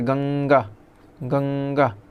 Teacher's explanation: अनुस्वार का उच्चारण नासिका से होता है,